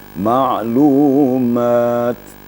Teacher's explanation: kemudian Ta Ta taknis kalau t panjang namanya ta taknis jadi apabila dia sukun t taknis itu ada hembusan sedikit ada hamasnya Tetapi hanya sedikit dengan seperti sampai seperti Huruf Sin ya atau